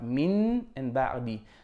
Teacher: We make a ghunna, the nasal sound, for 2 counts or 2 beats, and we can either leave a small gap or we can touch the lips, but very lightly, don't press too hard. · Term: iqlab